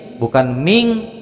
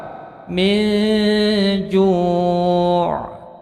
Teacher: Umpamanya kita ambilkan contoh dari nun sukun bertemu dengan huruf jim, salah satu dari huruf 15, maka nun sukun ini menjadi mendengung, panjangnya 2 harokat, tetapi bacaannya samar antara huruf n dan huruf eng. Min ju', bukan min, bukan ming, tapi samar, ikhfa.